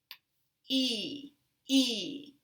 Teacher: when you say [i], your tongue is tense and your lips are a little tense, also.